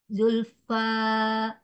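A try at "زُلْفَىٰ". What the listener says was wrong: Ya, jangan ada Hamzah belakang sayang ya. Zulfa, Zulfa,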